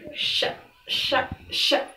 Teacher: Kalau sya ini di bagian tengah lidah dengan langit-langit, jadi agak naik. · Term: huruf sya